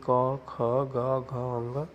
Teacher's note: कंठ के अंतर्गत का वर्ग आता है